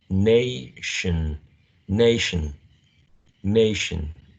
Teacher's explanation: pay attention to the Shh consonant sound also the schwa sound here as the last vowel sound